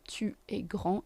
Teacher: Again, D and S are silent. They're still written, but they're silent.